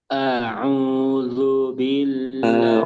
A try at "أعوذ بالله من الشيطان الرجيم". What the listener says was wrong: Perhatikan ain sama jim. Ain tidak boleh masuk hidung. A'u, a'u, bukan a'u. Kemudian jim gak boleh keluar udara. Jim, jim. Yang benar jim, jim, jim. أعوذ بالله من الشيطان الرجيم.